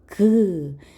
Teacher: 혀 뒷부분이 여린 입천장을 막았다가 열리는 소리예요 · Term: 파열음